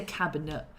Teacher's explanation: you say cabinet yeah and you drop the tea so therefore the E sounds a lot more like a uh rather than anything else